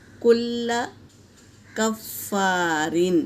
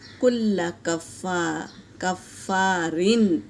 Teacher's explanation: واللہ لا يحب کل کفار، فا کے اوپر تشدید ہے اور الف سے پہلے زبر ہے، الف مدہ، اور را کے نیچے تنوین ہے اور اس کے بعد حمزہ آیا ہے تو یہاں تنوین کا اظہار ہوگا۔